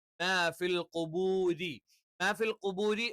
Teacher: പക്ഷെ നാവിന്റെ മധ്യഭാഗം മുകളിലേക്ക് ഉയരില്ല എന്ന് മാത്രം. രി എന്ന് പറയുമ്പോൾ നാവിന്റെ മധ്യഭാഗം താഴ്ന്നു നിൽക്കും.